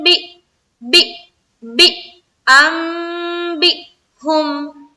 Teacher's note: بی میں حمزہ ساکنہ کا جھٹکا دیں گے، کیونکہ دیکھیں یہاں پر حمزہ ہے اور حمزہ کے اوپر کیا ہے، سکون ہے، تو یہاں پر ہمیں جھٹکا دینا ہے۔